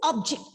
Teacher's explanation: Here I am stressing on the first syllable, and it is very obvious that it is a noun.